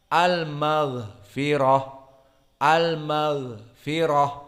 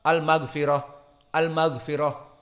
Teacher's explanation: Maka oleh sebab itu karena dia masih mempunyai sifat rokhawah, di saat gha disukunkan harus ada tenggang waktu. Karena keluarnya suara tadi.